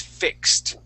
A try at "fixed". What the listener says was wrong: with that ed ending on fix. Fixed. Yeah, you had said fixed, but that ed ending has a T sound. Fixed.